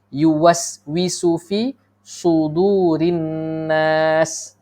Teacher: biasa saya dengar sin sudurin nas, sedangkan yang tepat ialah sad